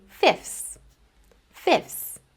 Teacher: Now, usually in fast speech, I wouldn't actually pronounce that middle TH sound. I would just go straight from the F to the S.